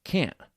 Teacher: Americans often don't pronounce the T in can't